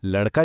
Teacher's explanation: पर बोलते समय यह अक्सर लड़का जैसा सुनाई देता है। र के बाद वाला अ लगभग गायब ही हो जाता है।